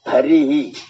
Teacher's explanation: अगर हरि आ गया हरि जी तो यहाँ जो विसर्ग की ध्वनि होगी वो ई वाली निकलेगी, ही वाली, हरि ही।